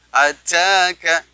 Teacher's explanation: karena dia termasuk huruf hamas, maka ada decak sedikit, ya, ada keluar udara